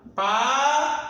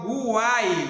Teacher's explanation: foneticamente eu pronunciei o U, o A e o I quando eu falo Guai, ok? Se eu deixar de pronunciar qualquer uma dessas aqui vogais, eu deixo de ter o meu tritongo.